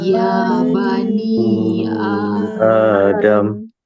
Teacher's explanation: Hamzah kedua dia dah tukar jadi alif siap-siap. Jadi bacanya dua harakat macam mad asli. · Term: mad badal